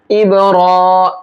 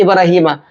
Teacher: اب کے با میں یہاں بھی قلقلہ کریں گے کیونکہ با کے اوپر جزم ہے، اور را کو ایک الف کے برابر کھینچیں گے